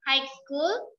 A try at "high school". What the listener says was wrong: Ini nggak dibaca hike, ini dibaca hi. Kayak kamu nyapa teman kamu, hi gitu. Hi ya, high school. G-nya nggak dibaca. H-nya pun nggak dibaca. Jadi hi, kayak kamu ketemu teman, high school.